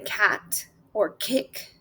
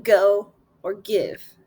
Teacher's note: Soft palate, velar sounds made in the back of the tongue touching the soft palate is like the in cat or kick, or the g in go or give.